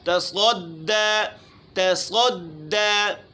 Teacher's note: تا باریک ہے، صاد موٹا ہے، دال باریک ہے، درمیان میں موٹا حرف ہے تو اس کے شروع والا اور آخر والا حرف یہ موٹا ہو سکتا ہے.